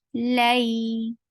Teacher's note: Give a nice time on fatha and then attach with ya and keep it soft